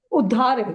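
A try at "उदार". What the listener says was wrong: No, not udhar. No, not udhar. Not udhar. UDAR. Udar. As opposed to UDH.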